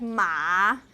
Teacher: call Supra Supra segmental because tone for a word like Ma you have two segments right but you you have that third tone that's that's the the entire syllable is in third tone it's · the entire syllable is in third tone it's cross segments so remember uh Chinese has tone and it's a Supra segmental